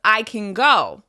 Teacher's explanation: The n sounds like the ng sound.